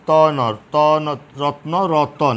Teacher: তুমি যদি শব্দটাকে ভাঙো, উচ্চারণে কিন্তু লক্ষ্য করা যাচ্ছে ত ন ত ন রত্ন রতন, এখানে অধ্বনিটা এসেছে, একটা অতিরিক্ত অ এসেছে। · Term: মধ্য স্বরাগম